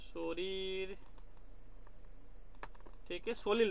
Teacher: র থেকে ল হয়ে যাচ্ছে, দুটো র ছিল, ল করে নিচ্ছে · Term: বিষমী ভবন